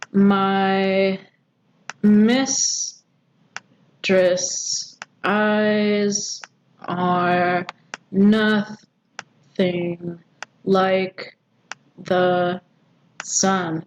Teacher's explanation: It's iambic pentameter because these are each iambs. Unstressed, stressed, unstressed, stressed, unstressed, stressed, unstressed, stressed, unstressed, stressed. And it is 5 feet, 10 syllables, perfect.